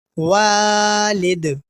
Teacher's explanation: اس لفظ کے آخر میں بھی ہم قلقلہ کریں گے، کیونکہ دال ساکن ہو کر آ رہا ہے، اور دال حروف قلقلہ میں سے ہے۔